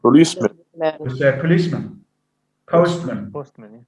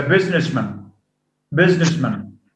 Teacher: policeman policeman postman he's a businessman businessman with a schwa so instead of having man as a strong form it goes to a schwa because of the effect because of the influence of stress on